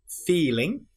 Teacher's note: So I is one of our combined vowels which goes I feeling e I and of course at the end of ing we have n that nasal ng sound